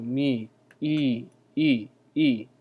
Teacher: It's basically like saying E with your lips in the O form.